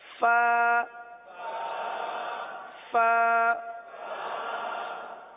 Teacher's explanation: اوپر کے دانت اور نیچے کے ہونٹوں کا جو تر حصہ ہوتا ہے وہاں سے ادا ہوتے ہیں. جیسے کہ میں نے پہلے بتایا تھا کہ ہونٹوں کے دو حصے ہوتے ہیں، ایک جو باہر رہتا ہے وہ خشک رہتا ہے، اور جو تھوڑا سا دانتوں کے ساتھ رہتا ہے یا بند ہو جاتا ہے وہ تر رہتا ہے.